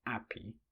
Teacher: H dropping is systematic deletion of H in English words in the cockney accent